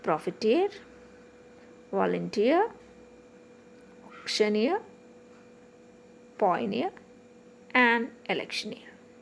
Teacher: in the words eer the stress is on the last syllable